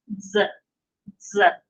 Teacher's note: this is pronounced like a Z, but it has a little bit of a D sound at the front.